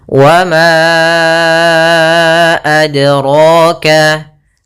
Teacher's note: Yaitu kita panjangkan 4 atau 5 harokat. Maka ma-nya kita panjangkan dahulu baru kita baca a-nya. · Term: mad jaiz munfasil